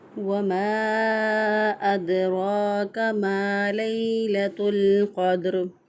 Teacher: इसको एक अलिफ के बराबर लंबा भी करेंगे, रॉ पुर भी होगी, एक अलिफ के बराबर इसको लंबा भी करेंगे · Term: रॉ को पुर